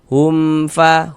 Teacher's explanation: Maka dibaca jelas. Huruf mim sukunnya dibaca jelas, kemudian tidak didengungkan, maka dibaca pendek saja. · Jangan dibaca hum dipanjangkan gitu jangan ya salah pendek saja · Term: izhar syafawi